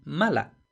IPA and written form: ˈmala (mala)